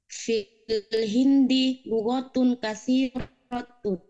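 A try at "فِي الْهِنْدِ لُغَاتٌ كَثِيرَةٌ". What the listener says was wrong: Lughatun. hindi lughatun katsiratun. dipanjangkan. Ya, bukan lughatun. Kalau lughatun hanya satu bahasa. Fil hindi lughatun katsiratun. Bedanya lughatun dan lughatun. Sebagai muslimatun dan muslimatun.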